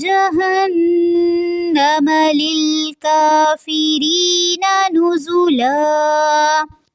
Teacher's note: جہنم نون مشدد پہ غنہ ہوگا، ناک میں آواز لے کر جائیں گے